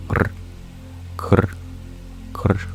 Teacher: The R is actually vocalic. It's a very quick alveolar flutter. A retroflex trill, liquid, krr, krr, krr.